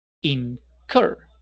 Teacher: El acento va en cur, no es incur, sino incur